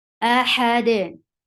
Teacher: When you are giving sukoon, look, dal with sukoon will get sifa of the qalqala. Qalqala. Ahad.